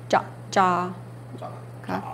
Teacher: you just say a a little bit longer when there's two of them